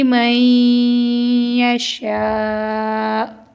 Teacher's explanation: یہاں پر نون ساکن کے بعد یا ہے، یعنی حروف ادغام تو ہم غنہ کریں گے